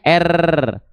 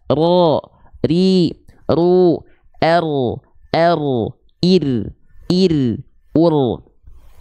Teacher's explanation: Takrir itu artinya dia bergetar tapi tidak berlebihan sebagaimana kita melafalkan huruf R alfabet.